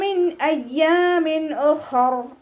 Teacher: ഹ ഇസ്തിഅലാൻ്റെ ലെറ്ററാണ്, ഉയർത്തിയിട്ട് ഉച്ചരിക്കണം. നാവിൻ്റെ ബാക്ക് മുകളിലേക്ക് നന്നായിട്ട് പോക്കി കൊടുക്കുക.